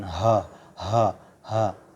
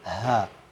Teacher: Jadi ha itu keluar di pangkal tenggorokan atau aksal halq. Jadi dia bukan keluar di dada.